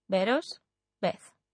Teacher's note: the v in BOS and Beth is pronounced like a b